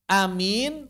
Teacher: Hamzahnya yang diimalahkan plus mad. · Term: imalah sekaligus mad